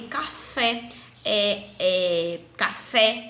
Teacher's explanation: a sílaba tônica é a última